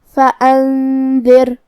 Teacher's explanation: دال حروف الاخفاء میں سے ہے اور اخفاء کا معنی ہے چھپا دینا لہذا ہم یہ نون کو چھپاتے ہوئے اور غنہ کے ساتھ یہ حکم کو ادا کریں گے